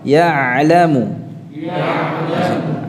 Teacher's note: Ainnya jelas ya, tidak macet seperti hamzah.